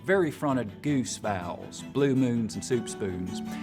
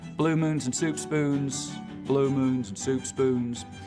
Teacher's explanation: I'll start off with very fronted goose vowels